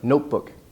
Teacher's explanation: compound main stress on the first part notebook it's a long vowel it's the O not look not